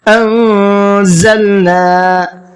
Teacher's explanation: انزلنا، نون ساکن کے بعد میں زا ہے جو اخفا کے حرفوں میں سے ایک حرف ہے، تو نون کے اندر تھوڑا سا ناک میں آواز کو روک کر کے پڑھیں گے